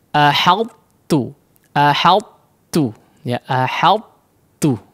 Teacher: masih menyisakan sifat itbaq daripada huruf ta-nya, ya, tidak melebur secara sempurna, tidak masuk secara sempurna kepada huruf ta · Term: idgham naqis